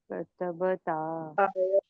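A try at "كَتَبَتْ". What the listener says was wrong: हाँ, क त ब और ता। ये तीनों जबर याद रखना। कतबता नहीं पढ़ेंगे आप। कतबता पढ़ेंगे तो गड़बड़ हो जाएगी। तो यहाँ पे ये ता के दो नुक्ते हैं और ये तीनों भी जबर है।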